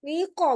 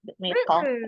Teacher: Jadi dirasain tuh pangkal lidahnya yang bawah nyentuh ke langit-langit yang lunak. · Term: qaf